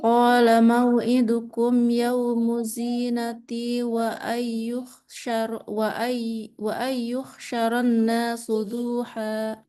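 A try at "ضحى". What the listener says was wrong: Duha, dunya nggak panjang. Duha.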